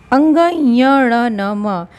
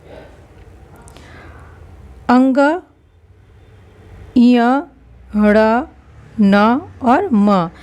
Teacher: इसको हम अनुनासिक भी बोल सकते हैं क्योंकि ये नाक और मुंह दोनों से बोले जाते हैं, तो पंचम वर्ण को हम अनुनासिक भी कहते हैं।